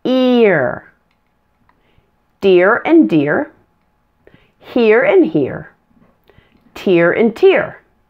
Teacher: Here are common homophones that have an ear sound. An ear sound is a blend of a short I plus an R.